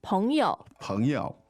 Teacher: So the tones are Second and neutral.